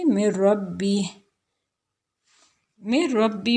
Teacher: نون، اس کو بالکل کلیئر نہیں پڑھا جا رہا، بلکہ میم جو ہے وہ ڈائریکٹ را کے ساتھ اٹیچ ہو رہا ہے. تو چونکہ نون اور را ایک دوسرے کے قریب المخارج حروف ہیں، دونوں حروف طرفیہ میں ہیں، تو اس وجہ سے جو ہے وہ یہاں پہ متقاربین ہو رہا ہے. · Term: ادغام